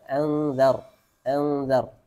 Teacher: Kemudian dar, ra sukun, semuanya fathah dibaca tafkhim. Tafkhim itu tebal.